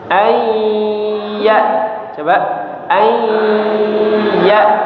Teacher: Hamzahnya harus di tenggorokan bagian bawah ya. Jangan ya, bukan ya tapi ya.